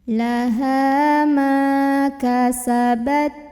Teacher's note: Laha ma juga mad tabi'i karena ada alif yang sebelumnya didahului fathah, maka mim ini juga 2 harokat.